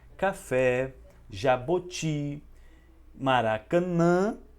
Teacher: a sílaba mais forte, ou seja, a sílaba tônica, se encontra na última sílaba